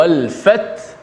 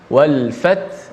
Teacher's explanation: Pertama, hujung ayat pertama ta yang mati dahulu. Wal fat, ta mati kena bunyikan sifat ta, ada hamas. Wal fat, ada angin sedikit. Kemudian bukan sekadar ta yang kena bunyi, ada ha di hujung.